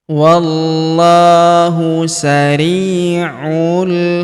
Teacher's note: Huruf U langsung sambung masuk ke huruf lam yang berharakat sukun langsung masuk lompat ke sini. · Huruf ri kita panjangkan dua harakat karena ya sukun di depannya. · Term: Alif lam qamar